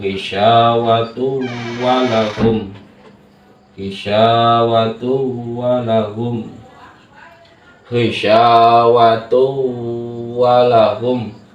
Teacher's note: ada tanwin bertemu dengan huruf wawu, maka bacaannya adalah idgham bi gunna, yaitu berdengung.